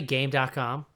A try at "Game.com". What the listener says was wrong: Well, it's called game.com, but it was like the very first line in the Wikipedia article is this game.com, styled as game.com, but pronounced Gamecom, not game.com.